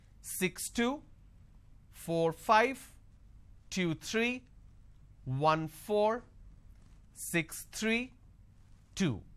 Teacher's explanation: for every two digit the second digit my tone is going up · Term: intonation